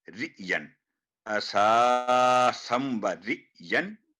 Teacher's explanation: ये हमजा है, इसकी आयन की आवाज नहीं आनी चाहिए, रि झटके के साथ, सख्ती के साथ